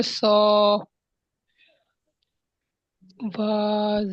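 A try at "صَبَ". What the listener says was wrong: সা নয়, স। মুখ গোল করবেন। স বা।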